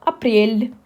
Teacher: you see that L is really soft here in this position because it stands before the soft sign